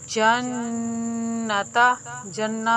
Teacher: نون مشدد ہونے کی صورت میں اس کے اوپر غنہ کرتے ہیں، ایک انگلی کے مطلب ایک الف کے برابر۔